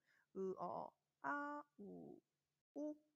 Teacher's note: 후설 모음이 무엇인지 떠올려 보면은 혀의 최고점이 뒤에 가 있는 거죠